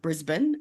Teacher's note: So unlike the city of Brisbane in America, they pronounce it Brisbane. We pronounce it Brisbane, as though there is no vowels in the second half of the word.